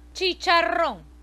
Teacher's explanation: la o donde se ha dado la mayor fuerza de voz y la n que queda intacta ahí está la n que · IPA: /c/ /i/ /c/ /a/ /r/ /o/ /n/